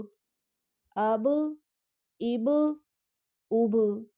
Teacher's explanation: با بھی کلکلا حروف ہے، اس کو بھی پڑھتے ہوئے آواز واپس کی طرف لوٹے گی